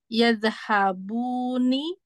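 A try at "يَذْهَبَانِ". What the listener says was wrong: Bukan, bukan. Nah, jadi kalau ini harus dikembalikan lagi fathanya. Yadhabani. Kembali ke fathah.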